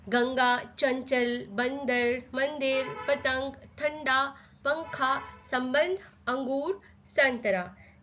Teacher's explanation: जब भी हम गंगा बोलते हैं तो वो नाक से निकलता है स्वर। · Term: अनुस्वार